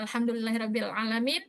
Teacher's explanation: Lamnya tidak memantul, cuman karena masuk ke ain itu kayak terdengar kurang sempurna.